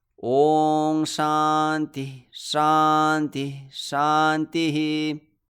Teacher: You echo the Visarga at the end, and the other Visargas can be generally silent.